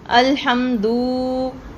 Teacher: دوسری غلطی اس میں ہے کوئی حرف بڑھا دینا، جیسے الحمدللہ کی جگہ پہ آپ نے الحمدو، یعنی کہ دال کے اوپر تو صرف پیش تھا لیکن آپ نے اسے واو مدہ کی طرح تھوڑا سا لمبا کر دیا، اس حرف کو آپ نے تھوڑا سا بڑھا کر پڑھ دیا.